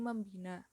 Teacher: nasal yang dilambangkan n pada prefiks me-n karena bergabung dengan morfem lain bina yang fonem pertamanya b. Realisasinya adalah morf mem